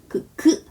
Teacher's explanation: 혀가 목구멍에 닿습니다 탁 하고 다 닿아요 극 하고 친단 말이에요 극 할 때 딱 막아요 혀가 그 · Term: 기역